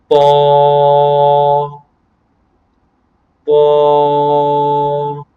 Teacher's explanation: یہ زبان کی نوک اور اوپر کے دانتوں کی جڑ سے ادا ہوتا ہے